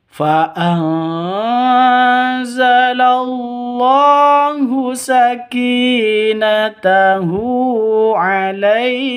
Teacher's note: nun mati bertemu dengan zain cara bacanya samar didengungkan siap-siap ke huruf senya karena bacaan ikhfa hakik seperti itu.